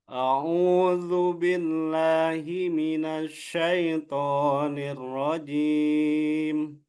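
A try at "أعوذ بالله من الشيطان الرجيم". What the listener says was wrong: Nah, itu shin ya, shin coba shin. Coba shin. Sh, sh. Nah, nah, minasyaitonir rajim. shinnya diketarakan, Pak Firman.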